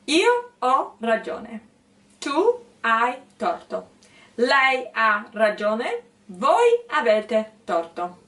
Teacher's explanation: you start high with the intonation, then you go down and go back up. And so in your mind, right, there has to be a wave while you speak.